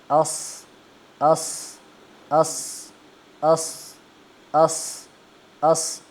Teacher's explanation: अब सद मोटा पढ़ना है और ऊंचा पढ़ना है। लेकिन आपने होठों को गोल नहीं करना। · ہاں اب صاد موٹا پڑھنا ہے، اونچا پڑھنا ہے، لیکن آپ نے ہونٹوں کو گول نہیں کرنا